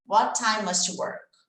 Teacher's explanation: What time, vai ter um som de T só, né?